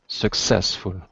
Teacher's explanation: The stress is on the success, second syllable.